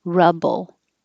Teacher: is ooh and you really round your lips ruble rubble ru you don't have to round your lips at all and the vowel is uh like up